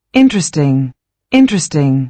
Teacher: And the stress mark is on the first syllable.